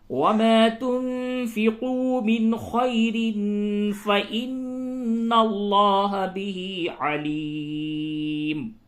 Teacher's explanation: را پہ تنوین ہے، اس کے بعد فا آیا، یہاں پہ اخفا ہوگا